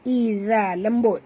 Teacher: Huruf zal adalah makhrajnya di hujung lidah.